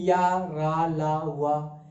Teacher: वे व्यंजन जो उच्चारण में मुख के विभिन्न उच्चारण स्थानों को आंशिक रूप से स्पर्श करते हुए बाहर निकलते हैं, उन्हें हम अंतस्थ व्यंजन कहते हैं।